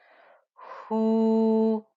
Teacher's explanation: I held on to that ghunna before I sounded out the fatha on top of the noon. Hu, the ha with the dhamma gave me a 2-count stretch.